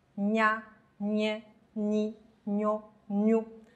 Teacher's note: 舌尖抵住下颚，舌面尽量往上抬，贴住硬腭。硬腭就是我们所说的上颚的前半部分，形成阻塞，气流绝大部分从鼻腔流出，声带震动。